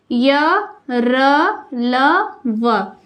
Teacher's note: जो अंतस्थ व्यंजन है वह मुख के किसी भी भाग से बिल्कुल भी स्पर्श नहीं करती था, तो वह स्वर और व्यंजन के बीच की स्थिति होती है, तो वो जो है अंतस्थ व्यंजन कहलाती है।